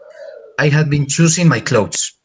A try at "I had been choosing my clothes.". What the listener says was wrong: That is perfect. Thank you very much.